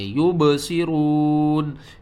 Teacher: با یہاں پر ساکن ہے تو اس کے اوپر قلقلہ کریں گے